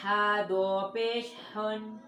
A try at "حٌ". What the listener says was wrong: تم ہر بار غلطی کرتے ہو اخفاء کی